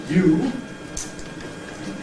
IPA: juː